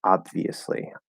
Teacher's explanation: you can completely drop the b in this word and say obviously um now the more you get the lips closed you don't